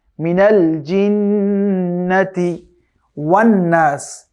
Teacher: জিন্নাতি মিনাল জিন্নাতি এটাকে শক্ত করে পড়তে হবে জি জি এরপরে নুনের উপরে তাশদিদ রয়েছে সুতরাং নুন কেও ওয়াজিব গুণ দিয়ে পড়তে হবে